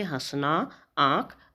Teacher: इसका उच्चारण करते समय नाक और मुंह दोनों से हवा निकलती है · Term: अनुनासिक